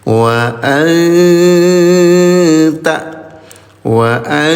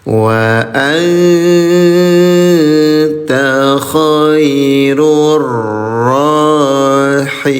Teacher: Nun sukun bertemu dengan huruf ta. Cara bacanya samarkan tahan dua harakat. Ini bunyi nun sukunnya disamarkan.